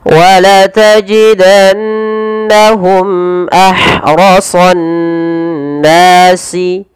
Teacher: Kemudian pada lafal mimati bertemu hamzah, ini kita namakan dengan idhar syafawi, dan yaitu harus dibaca dengan jelas suara mimnya tanpa ada penahanan.